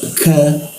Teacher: huruf ka lidahnya diturunkan rongga udara terbuka keluar hembusan udara